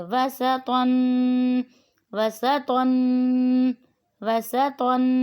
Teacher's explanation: واو زبر وا، سین زبر سا، وسا، طا 2 زبر طن، وسطن۔ سین کو باریک پڑھیں گے، سیٹی کی آواز نکلے گی۔ طا کو موٹا کر کے پڑھیں گے، طن، تنوین ہے اس پہ بھی غنہ کریں گے۔